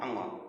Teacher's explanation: अंगा बोलने के लिए आपको नाक का भी प्रयोग करना पड़ेगा, मुंह का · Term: अनुनासिक